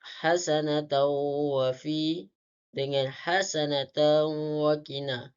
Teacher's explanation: Kemudian hasanatan wa fi dengan hasanatan wa qina, di mana hukum tajwidnya adalah idgham mal hunnah. Cara bacaannya memasukkan huruf tanwin kepada huruf yang kedua iaitu waw, dibaca dengung beserta dua harakat.